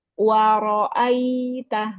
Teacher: kita harus menjaga kestabilan bunyi ai. Jangan sampai ada ai, ada ayunan di ianya.